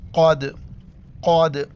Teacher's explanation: بڑی قوف ہے موٹا کر کے پڑھیں گے اور دال کے اوپر قلقلہ کریں گے۔ قلقلہ یعنی آواز کا پوری منہ کے اندر گھومنا یا جھٹکے کے ساتھ پڑھنا۔